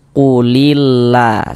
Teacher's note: lam jalalahnya ini kita baca tipis, kita baca tarkik